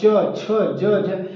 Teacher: जो हमारे मुख से वायु निकलती है व घर्षण करके निकलती है इसलिए इसको स्पर्श संघर्षी व्यंजन कहते हैं